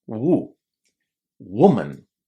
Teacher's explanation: So in singular, when we say one woman, the vowel sound in the first syllable is u.